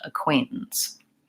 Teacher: the most important thing is to have a clear Quay in the middle clear vowel and the short reduced syllables on either end